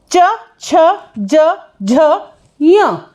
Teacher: जिसका उच्चारण हमारे तालु से होता है, जो गले से थोड़ा सा ऊपर उठ के आता है, तालव्य। तो ये सभी के सभी हमारे जो च वर्ग है, च वर्ग का उच्चारण हमारा तालव्य से होता है।